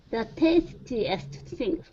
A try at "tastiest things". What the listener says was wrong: Great.